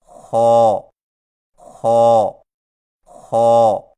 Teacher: خا کی ادائیگی میں زبان کی جڑ کو تالو کی طرف بلند کرتے ہوئے موٹی آواز میں پڑھیں، یعنی خو خو خو۔